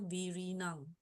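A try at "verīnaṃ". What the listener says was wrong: Not V. V-I. It's V-E. Ve.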